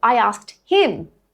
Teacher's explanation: It keeps the h on him because it's stressed. We're stressing for emphasis.